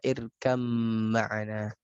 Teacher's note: Ya, masuknya huruf ba ke mim.